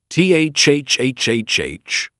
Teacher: It's soft with air passing between the tongue and teeth. Stick your tongue out slightly. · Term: th sound